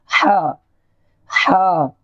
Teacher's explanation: اس کو حلق سے نکالیں گے، اور یہ بڑا ہا ہے، اس کو اس طریقے سے بولیں گے ہا ہا۔